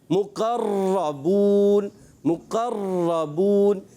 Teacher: تکرار اصلی کرتے ہیں, یعنی اتنی تکرار ہوتی ہے کہ ایسے لگتا ہے کہ کئی را ادا ہو گئیں